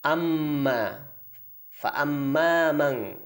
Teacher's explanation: Banyak sekali di situ gunnah, baik itu pada huruf mim maupun nun yang ada tasydid di atasnya, yaitu pada kalimat amma, fa amma mang.